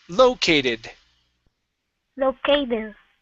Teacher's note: so right here the stress is at the beginning